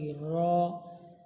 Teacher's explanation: র জীবের আগার উল্টো পিঠ এবং তার বরাবর উপরে তালুর সাথে লাগিয়ে উচ্চারিত হয় র।